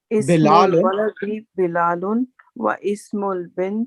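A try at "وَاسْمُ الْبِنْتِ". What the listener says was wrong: yeah, alif becomes silent.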